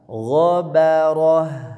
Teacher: G tebal, ba tipis, ro tebal, ha ya ta marbutah ketika wakaf jadi ha. H-nya tipis walaupun h-nya ini ha be ha besar.